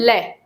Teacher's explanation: जब हम लय बोलते हैं तो जो जीभ है वो मसूड़ों पे टकराती है। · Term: वर्तस्य